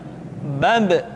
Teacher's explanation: Ketika mati, maka terdengar suara pantulan.